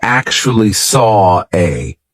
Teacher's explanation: a the reason why we're doing an R here is because we have the or sound of Saw and then an a we have another open vowel sound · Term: intrusive R